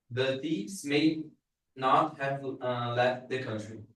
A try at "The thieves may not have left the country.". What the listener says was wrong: You are still reading separately. You are separating the words. Connect them.